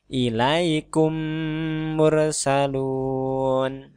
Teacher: sini tapi di huruf yang berikutnya contoh ada kata ilaikum mursalun mim mati ditasdidkan ke mim yang berikutnya seolah-olah ini bertasdid jadi didengungkan juga sama dengan Ikhfa Syafawi tadi kalau tadi disamarkan ini tidak samar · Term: idgham mimi